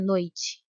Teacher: Repare que o O é pronunciado com mais intensidade, por isso ele é a vogal e o I a semivogal.